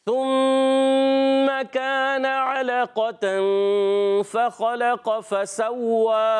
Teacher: वाव पर खड़ा ज़बर एक अलिफ खींचेंगे